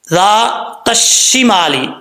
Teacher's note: ذال بغیر سیٹی کے پڑھا جائے گا. آگے تا ہے, ذال کے آگے الف ہے, ایک الف کی مقدار لمبا بھی کریں گے, تا کو شین سے ملائیں گے, بیچ میں الف اور لام جو ہے وہ گر جائے گا.